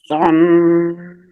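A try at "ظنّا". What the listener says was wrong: See, the last letter has alif matta, right? So stretch. Stretch. Zonna.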